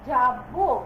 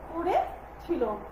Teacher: ক্রিয়াপদের অন্ত অ সাধারণত ওরূপে উচ্চারিত হয়